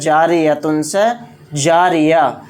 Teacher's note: گول تا پر وقف کرنا ہو تو وہ ہائے ساکنہ بن جاتی ہے